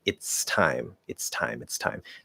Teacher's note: you start in the t you push the s through that and then you close into the t and release it for time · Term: illusionary t